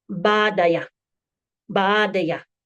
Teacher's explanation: There's a slight guttural sound differentiating between each A. So it's not just ah, it's ah, ah.